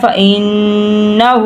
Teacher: ہم نے گننا کیا ہے، ہم نے ناک میں سے آواز نکالی ہے، گننا کیا ہے، اور الٹا پیش ہے، اس کو لمبا بھی کیا ہے۔